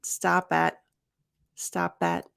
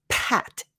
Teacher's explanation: a hard stop at stop at stop that so not Pat you're not going to over aspirate the p